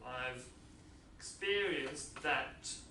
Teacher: I have I've so contracted form I've experienced that the D in experienced is elided